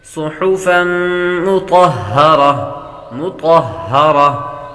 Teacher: تنوین کے بعد میم حروف یرملون میں سے آ رہی ہے، غنہ کر کے پڑھیں گے۔ صحفا مطہرہ تا حروف مستعلیہ میں سے ہے اس لیے اس کو پر پڑھیں گے اور آخر میں گولتا کو حالت وقف میں ہا سے بدلیں گے۔